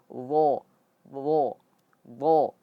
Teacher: Lidah yang paling belakang atau lidah yang belakang itu kita angkat ke langit-langit atas sehingga menjadi tebal.